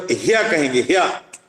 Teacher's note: यकार में जब ह्या कहेंगे, ह्या, हा और या जुड़ेंगे, तो हा और या जब जुड़ेंगे तो दोनों मिलकर के उरस्य कहे जाएंगे।